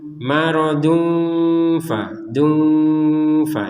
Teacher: Nun mati bertemu fa atau tanwin bertemu fa. Jadi dua-duanya dibaca dengan samar.